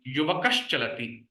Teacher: Then the Adesha will be Sha. So Sakara will be converted into Shakaraha. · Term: Shrutva Sandhi